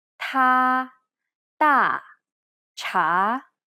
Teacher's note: The first vowel is A, Ta, Da, Cha. This is almost identical to the A sound in the word father, except the tongue is in more of a neutral position.